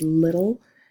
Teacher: the L actually carries the syllable at the end of the word little the e is silent so it's actually that a schwa sound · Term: syllabic L